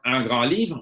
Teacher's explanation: But if it's un grand livre, a big book, a great book, un grand livre, we don't hear the D.